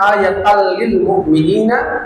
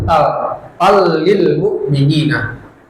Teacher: Walitakuna ayatan lil mu'minina, ayatan lil mu'minina, tanwin bertemu lam, idgham bila guna. Tanwin itu masuk ke lamnya, jadi dia tidak dibaca tan jadinya, tapi tal lil mu'minina.